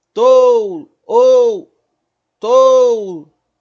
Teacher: Então eu tenho o O forte e o U quase sumindo. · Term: ditongo decrescente